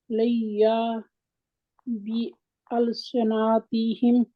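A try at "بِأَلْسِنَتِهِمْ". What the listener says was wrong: آپ ایک ایک لفظ پڑھ رہی ہیں نا، ان کو ملا کے پڑھے. یہاں پہ اقلاب ہوگا، یہ یا کے اوپر میم ہے نا چھوٹی سی، یہاں اقلاب ہوگا. نہیں اقلاب ہوگا یہاں.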